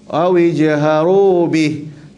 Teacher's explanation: Kalau sambung bihi panjang. Tapi kalau kita berhenti, matikan ha.